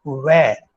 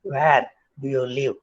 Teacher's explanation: So it becomes a kind of labiodental fricative V in the place of the approximate